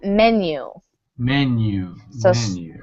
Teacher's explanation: Stress on that first syllable, but then the second syllable is like mu.